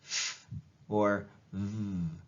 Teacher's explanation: Labiodental then is a combination of your lips for labio, your dental is your teeth, right? So you put your top teeth on your bottom lip and say f, or v